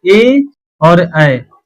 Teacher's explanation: सातवां नंबर कहता है कि ए दैतो कंठ तालु, ठीक है, इसका मतलब बस यही ए और ऐ, ठीक है, यानी ए ऐ का उच्चारण स्थान कंठ तालु होता है